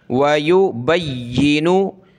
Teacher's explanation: या को सख्त करेंगे तशदीद की वजह से